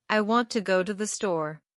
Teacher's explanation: In this statement, the stressed words are want and store. These words are pronounced with more force and clarity. · These words are pronounced with more force and clarity. The smaller words to and the are compressed into quick, soft sounds that barely register. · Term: stress and rhythm